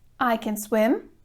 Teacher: so in the positive sentence the verb can remains unstressed